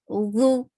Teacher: the makhraj of dha is to keep your tip of your tongue under the frontal two teeth. Dhu, who. Circle your lips well for dhamma, who, and it is 2 counts long.